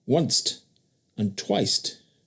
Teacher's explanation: they also gave once and twice a final T